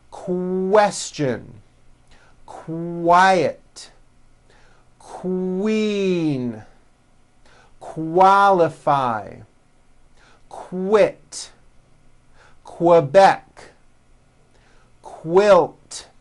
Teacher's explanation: may not have known that so for example the word quick is pronounced with a k and a strong W sound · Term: Q sound